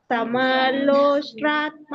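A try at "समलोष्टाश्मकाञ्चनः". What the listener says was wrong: ಸಮಲೋಷ್ಟ್ರಾಶ್ಮ, ಶಕ್ಕೆ ಮವತ್ತಿದೆಲ್ಲ, ರೋಷ್ಟ್ರಾಶ್ಮ ಕಾಂಚನ. ಇಲ್ಲಾಂದ್ರೆ ಅಲ್ಲಿ ಅಶ್ಮ ಕೇಳಿಸೋದಿಲ್ಲ. ಸಮಲೋಷ್ಟ್ರಾಶ್ಮ ಕಲ್ಲು ಅಂತ ಹೇಳಿ ಕೇಳಿಸಲ್ಲ, ಹಾಗೆ ಅದೊಂದು ಗಮನಿಸಿ.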